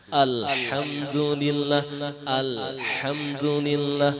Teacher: Lamnya itu bukan huruf qalqalah. Jadi jangan dipantulkan.